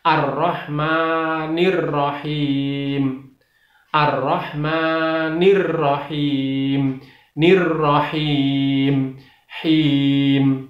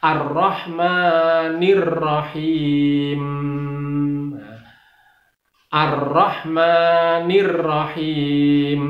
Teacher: lafal memnya itu harus dibaca jelas, jadi tidak boleh ada buntutnya atau tidak boleh ada dengungnya